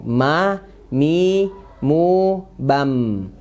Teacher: Ya, jadi mimnya sukun. Mim udah kita bahas, menempelkan kedua bibir dengan lembut ya. Tapi kalau dalam keadaan dia sukun, nah itu ada mengalir sedikit.